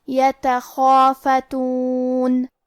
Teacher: کلمت یتخافتون میں یا پہ اور تا پہ اور خا پہ تینوں پہ زبر ہے تو ہم یہ تینوں زبر کو ظاہر کریں گے اور اسے برابر سے ادا کریں گے. خا کی ادائیگی حلق کے اوپر والے حصے سے ہے. خا حروف تفخیم میں سے ہے تو ہم یہ حرف کو بھاری آواز میں پڑھیں گے اور کیونکہ اس کے بعد مد الف ہے، مد الف اپنے پیچھے والے حرف کا حکم لیتا ہے تفخیم میں اور ترقیق میں.